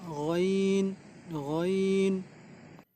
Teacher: गैन जो है वो खा की तरह ऊपर वाले मुंह की तरफ का जो हलक का हिस्सा है वहाँ से निकलेगा।